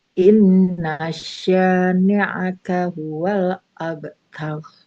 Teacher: Huruf sya, inna sya-nya 2 harokat.